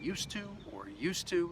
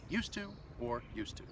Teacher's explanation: The D and the T, they blend together to create one sound. So yeah, the pronunciation, it's really the same.